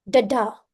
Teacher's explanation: let's discuss what is iic meter iic meter is nothing but unstressed syllable followed by a stressed one da da you can also call it as a rising Rhythm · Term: ambic meter